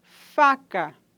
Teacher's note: fricativa lábio dental desvozeada